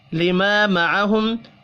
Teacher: الف مدہ کو ایک الف کے برابر کھینچ کر پڑھنا ہے